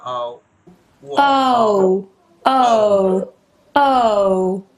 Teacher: প্রথমে শোয়া, তারপরে উ, উ সাউন্ড।